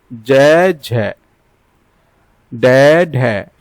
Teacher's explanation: सघोष व्यंजन जिनका उच्चारण करते समय स्वर यंत्र की कंपन होती है, वायु के साथ स्वर निकलता है।